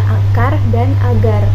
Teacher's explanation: Selanjutnya terdapat konsonan hambat velar K dan G. Dihasilkan dengan cara menempelkan belakang lidah pada langit-langit lunak. Udara dihambat di sini kemudian dilepaskan.